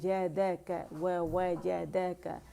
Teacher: और यहाँ भी जैसे ववजदक का हमने बारीकी से पढ़ा था और मैंने भी आपको वो डायग्राम बताए थे हरफ मज़मूम की और के वाव की अदायगी किस तरह की जाती है, वो भी पेश की तरह की जाती है। वाव के लिए कंप्लीट रोलिंग होती है होंठों की